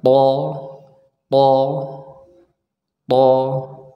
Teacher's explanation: yang atas atas ya Nah dan EE pangkal lidah kita ya pangkal lidah kita kita angkat supaya huruf tho ini tebal ya kita coba ucapkan th th th ya tempelkan ujung lidah · huruf tho ini diucapkan dari ujung lidah kita kita tempelkan ke Pangkal gigi seri yang atas